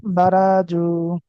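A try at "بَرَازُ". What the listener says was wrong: এখানে টান কোথায় বলেন তো? টানটা কোথায়, কার মধ্যে? জায়ের মধ্যে না? অন্য জায়গায় টান দিলে হবে? অন্য জায়গায় তো দ্রুত পড়তে হবে। বারা না আবার টান দে, বড় জু, জু, জু এটা, বড় জু।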